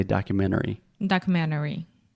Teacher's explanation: if I'm speaking fast I will almost remove the T it's more of a stop T